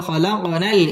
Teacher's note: কফ কলকলার হরফ ধাক্কা দিয়ে পড়তে হবে